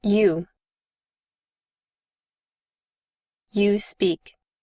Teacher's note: Observe que en este término OU se pronuncia como una U larga.